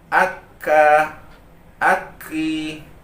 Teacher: pangkal lidah bertemu atau menyentuh rahang atas bagian daging dan tulang secara bersamaan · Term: huruf Kaf